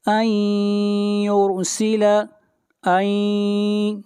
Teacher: ان یرسل، ان، نون ساکن کے بعد حروف یرملون میں سے یا ہے، ادغام مع الغنہ ہوگا، اور را کو موٹا پڑھیں گے، را سے پہلے پیش ہے